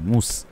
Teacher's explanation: মনে রাখতে হবে ওয়াও পেশ গোল হবে, এখানে ওয়াও পেশ হয়েছে, সেজন্য ঠোঁট গোল করে মুস হবে